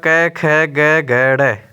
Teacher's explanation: क ख ग ग ड इनका उच्चारण स्थान कंठ है